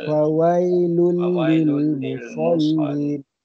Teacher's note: Musallin, huruf sad, jangan musal jadi huruf sin.